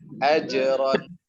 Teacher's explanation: Caranya ditahan dengan kuat, makhraj jimnya ditahan dengan kuat, Pak. Kalau dia lepas dari makhrajnya, pas kita masukkan dia, sukunkan dia, maka dia akan berangin. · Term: qalqalah